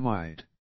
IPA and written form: æsɪ'tæmaɪd (acetamide)